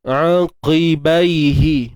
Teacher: Kemudian qi, Huruf Qaf baris bawah ni kena tebal ya. Walaupun di baris bawah kena tebal juga macam biasa.